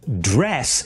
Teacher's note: the vowel sound in dress is an open mid front vowel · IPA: /drɛs/